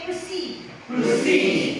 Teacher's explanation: So nagsunod ang consonant. Even though it's pa, you are not going to aspirate this, even though it's pa, even though it's in initial position, because it is a clustered consonant. So, no hair.